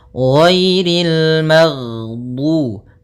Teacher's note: Jahar yaitu tertahannya nafas kita. Jadi ketika melafalkan ghain, nafas kita tertahan, suara kita dialirkan.